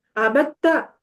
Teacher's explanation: وہ آپ نے پڑھا ہوگا، شاید کسی کو پتا ہو کہ جب دال اور تے، اصل میں ان دونوں کا مخرج سیم ہے، دال کا اور تا کا. جب یہ دونوں کٹھے آ جاتے ہیں تو کٹھے پڑھے نہیں جا سکتے کیونکہ مخرج سیم ہے.